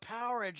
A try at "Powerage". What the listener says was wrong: Why do you say it like Power Age? Like you're talking like fridge, Power Ridge. Like Powerade.